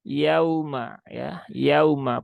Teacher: sifatnya lembut e maka dibaca dengan lembut Nah dengan lembut dan ini bunyinya u ya jangan disentak dan jangan berubah menjadi O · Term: huruf Lin